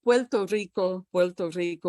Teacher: if you're from puerto rico you're going to say puerto rico puerto rico with a little l in there